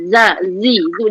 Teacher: Dia ada desir. Itu jadi safir macam zai.